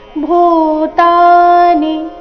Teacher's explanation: ಭೂತಾನಿ ನಲ್ಲಿ ಭೂ ಮಹಾಪ್ರಾಣ ದೀರ್ಘ ಚರಣದ ಕೊನೆಗೆ ನಿ ರಸ್ವ ಇದೆ